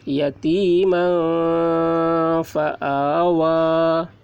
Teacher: تنوین کے بعد حروف اخفا میں سے فا آ رہا ہے، اس لیے تنوین کی آواز کو ناک میں چھپا کر پڑھیں گے